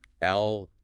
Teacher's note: The vocal stress falls heavily on the middle syllable.